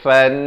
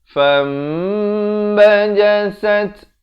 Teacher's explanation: Cara bacaannya ditukarkan daripada bunyi nun kepada bunyi mim. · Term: iqlab